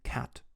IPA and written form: kʰæt (cat)